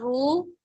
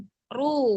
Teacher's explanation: Khairu, menggunakan domah, bukan ru. Jangan ke dalam suaranya, dorong depan Ru, ke bibir.